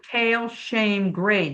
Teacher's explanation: Long A is A. It's a diphthong, which means there's two sounds. Diphthong. This E and the short I is not a short I.